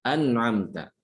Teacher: Gunahnya nun itu jangan dibaca an'amta, salah, ya. Karena nunnya itu di situ idhar, jadi gunanya itu sedikit